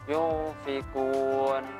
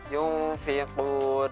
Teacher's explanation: ketika mulut kita sudah masuk ke nun ini, maka mulut kita langsung seolah-olah mau bunyi ke fa ini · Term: ikhfa